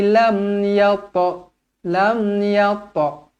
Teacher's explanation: ta yang bertanda mati qalqalah sughra dibaca melantun